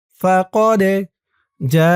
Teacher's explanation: যা এখানে ৪ আলিফ টান, মধ্যে মুত্তাসিল